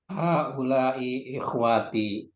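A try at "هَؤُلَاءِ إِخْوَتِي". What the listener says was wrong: Nawanya tidak dipanjangkan ya. Coba ulangi lagi.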